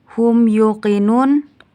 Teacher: hukumnya izhar syafawi karena mim sukun bertemu dengan ya dibaca jelas